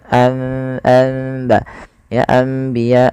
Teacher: Membalikkan suara nun menjadi suara mim. Awalnya anbiya Allah karena bertemu dengan ba maka diganti dengan mim. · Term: iqlab